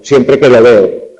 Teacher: Pero digamos que el elemento átono ahí es la que, el que y el siempre pues tiene un acento que al formarse el enunciado es secundario